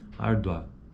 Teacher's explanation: Ele é crescente porque, ó, árdua, árdua, é a segunda vogal que tem proeminência acentual. Esse U, ele praticamente some. Não é que ele some, mas ele é menor. Árdua. Então, por ser menor, por a proeminência acentual ser na segunda vogal, é um ditongo crescente.